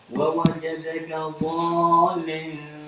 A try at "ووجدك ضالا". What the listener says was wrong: Kasih panjang lagi nama rokat.